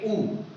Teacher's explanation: इनका उच्चारण आपके पास ओंठों से किया जाता है, इसलिए इसे ओष्ठ वर्ग में रखा जाता है और उच्चारण स्थल इसका होता है ओंठ।